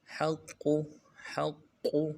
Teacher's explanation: انہ الحق، حق قاف کے ساتھ ملانا ہے، حق حق، قاف کے اوپر تشدید ہے، قاف کو موٹا بھی کرنا ہے